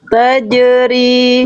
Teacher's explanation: Harusnya jim sukun itu memantul dan bunyi nafasnya hilangkan.